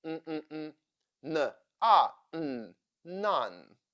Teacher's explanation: beginning of the word it sounds more nnn more strong and at the end of the word it sounds more nasal